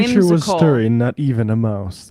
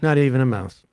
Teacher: supposed to be a rising intonation at the end of these things